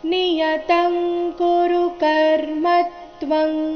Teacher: ಜಾಗದಲ್ಲಿ ಅನುಸ್ವಾರ ಬಂದಿದೆ ನಿಯತಂ ತಂತರ ಮತ್ತೆ ತ್ವಂಗ್ ಅಲ್ಲಿ ತ್ವ ನಂತರ ಅನುಸ್ವಾರ ಎರಡು ಅನುಸ್ವಾರಗಳ ಉಚ್ಚಾರಣೆ ಅನುನಾಸಿಕಂ ಗ ರೀತಿ ಬರ್ತಾ ಇದೆ ಯಾಕಂದ್ರೆ ಮುಂದಿನ ಶಬ್ದ ಕ ವರ್ಗದ ವ್ಯಂಜನದಿಂದ ಕ ದಿಂದಾನೆ ಶುರುವಾಗ್ತಾ ಇದೆ